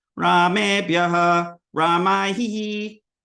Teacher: So aspirated, but bhya, and then ha at the end. That's your visarga, is your little ha. So it's Ramebhyaha, Ramaihi.